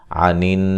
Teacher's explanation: نون مشدد پہ غنہ ہے